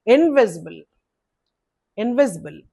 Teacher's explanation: So four syllables word stress is on the second syllable